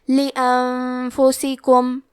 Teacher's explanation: کلمت لانفسکم میں نون ساکن ہے پھر حرف الفا ہے. فا حروف الاخفاء میں سے ہے تو ہم یہ حکم کو غنہ کے ساتھ ادا کریں گے